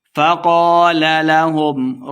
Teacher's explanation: الف مد ہے، دو حرکات لمبا کر کے پڑھیں گے